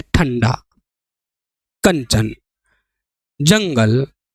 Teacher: अनुस्वर के उच्चारण में वायु नाक से निकलती है और उच्चारण झटके के साथ होता है